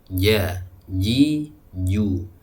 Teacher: Tengah lidah diangkat sampai menempel ke langit-langit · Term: Jim